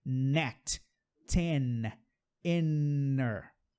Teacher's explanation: O N do can, a língua está no céu da boca, atrás do dente. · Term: som do N